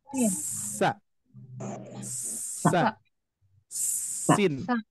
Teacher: Sin keluar dari ujung lidah dengan ujung dua gigi seri bawah · saofir itu adalah desisan yang sangat kuat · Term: asofir